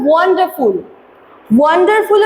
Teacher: ওয়ান্ডারফুল আমরা দেখবো যে ওয়ান যে আছে, ওয়ানের ওপরে কিন্তু বেশি ফোকাস, তাই ওয়ানটা হচ্ছে স্ট্রেস, আর ডার আর ফুল এই দুটো হচ্ছে আনস্ট্রেস